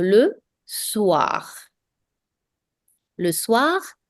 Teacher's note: Another nasal vowel here, S-O-I, which is pronounced as wa. So, le soir.